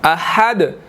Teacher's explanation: دال ساکن ہے، یہاں پر قلقلہ ہوگا